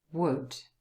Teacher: of you because there are three letters o u l and really it's just one sound so the l is completely silent